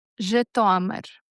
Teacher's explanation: The stress is on that second syllable.